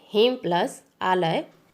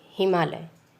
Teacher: अ और आ मिल करके आ बनता है। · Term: दीर्घ स्वर संधि